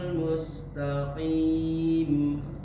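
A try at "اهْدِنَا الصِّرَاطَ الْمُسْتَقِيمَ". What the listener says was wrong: Bila kurang tipisin huruf so-nya aja, karena so berharokat kasroh, jadinya harus lebih ditipisin. Ihdinas si. Coba si lebih tipis lagi. Si dimiringin.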